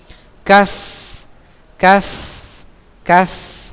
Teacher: Huruf kaf ini pangkal lidah paling belakang masih sama ya. Pada posisi menempel langit-langit antara bagian tulang atas dan bagian yang lunak atau daging. Ya, ke depan sedikit setelah qaf.